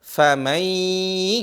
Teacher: Famai jadinya, bukan paman. Famai disertai dengan khayshum, suara dari hidung, plus dipanjangin 2 harokat atau 4. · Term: idgham